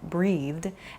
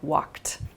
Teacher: a soft d sound like breathed and then a more hard t sound like walked